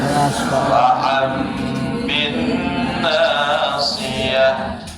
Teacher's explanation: nun itu berubah jadi bunyi mim ketika dia bertemu dengan huruf iklab